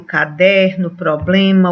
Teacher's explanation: paroxítona a sílaba tônica é a penúltima sílaba